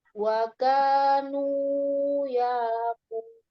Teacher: K-nya terlalu panjang, Umi. 2 harokat saja.